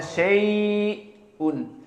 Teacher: Dan perkara yang ketiga as-sakt, maknanya paus, dipaus sebentar atau diberhentikan sebentar di saat bertemu dengan Hamzah